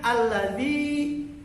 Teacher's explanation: Alladzi zi-nya panjang berarti di situ ada hukum bacaan mad.